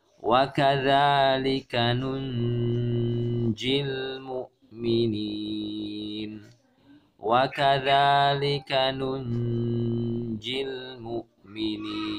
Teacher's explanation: Cara membacanya adalah karena nun sukun bertemu dengan huruf jim, dan jim adalah salah satu huruf ikhfa, jadi kita membacanya dengan ghunnah dan menahannya selama sekitar dua atau tiga harakat